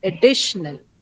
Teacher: this second syllable D on which you have the stress is going to be articulated or pronounced a little longer and louder than all the other syllables in the word